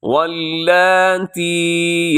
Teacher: اس میں لام جو ہے یہ باریک پڑھا جائے گا، اسے آپ موٹا نہ کیجیے گا، کھڑی زبر کی وجہ سے ہم اس کو لمبا کریں گے، کھینچ کے پڑھیں گے۔